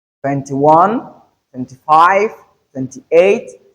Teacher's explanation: So the stress is on the second number and not really the first number.